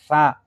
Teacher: Terus sa lidahnya tempel gigi atas